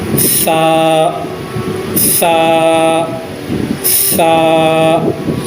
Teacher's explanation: اوپر اور نیچے کے دانتوں کے درمیان میں زبان کی نوک کا تھوڑا سا حصہ لگا کر سا کو ادا کیا جاتا ہے